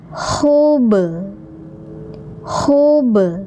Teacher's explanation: ini ba-nya pantulkan ya karena huruf qalqalah